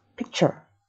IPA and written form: pɪktʃɚ (picture)